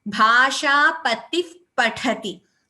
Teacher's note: Because it is a visarga followed by pa, we do not chant the visarga completely. We chant it as Bhasha patif pathati. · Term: upadhmaniya